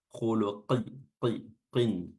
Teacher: Huruf qafnya tetap harus tebal.